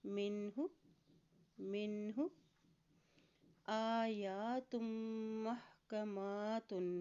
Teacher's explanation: حمزہ کے اوپر کھڑی زبر ہے، یا کے اوپر بھی کھڑی زبر ہے، تو ان دونوں حروف کو ایک ایک حرکت لمبا ادا کریں گے